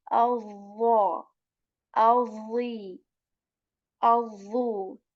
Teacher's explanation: Tip of the tongue touches the like edges or tip of our upper teeth, and we make this heavy and say الضا الضي الضو. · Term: heavy letter